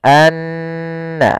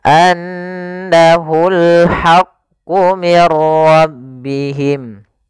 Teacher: Dan gunnahkanlah atau dan bacalah mim yang bertasydid atau nun bertasydid dengan bacaan gunnah. Maka cara membacanya tahan dulu n-nya, anna, baru dilepas.